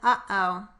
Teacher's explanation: the glottal stop, which is the middle sound in uh-oh.